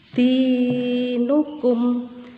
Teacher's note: Dinukum panjangnya satu alif atau dua harokat. Dua harokat artinya dua ketukan. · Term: mad tabi'i